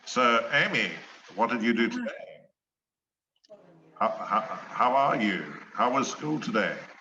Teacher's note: some of the sound seems to come through their nose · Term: adenoidal voice